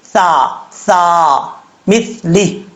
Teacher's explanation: سیٹی نہیں آئے گی، بغیر سیٹی کے ساتھ پڑھا جائے گا، اس کا مخرج ہے زبان کا سرا اوپر والے دانتوں کے اندرونی کنارے سے لگے تو سا پڑھا جاتا ہے